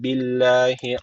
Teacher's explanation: Allah lafzı burada ince okunması gerekiyor. Çünkü öncesindeki harfin harekesi altta yani alttan giriş yapılıyor Allah lafzına.